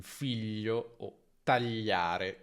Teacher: E concludiamo con l'ultimo suono che è gli, come in figlio o tagliare, che è una consonante laterale, palatale, sonora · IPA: /ʎ/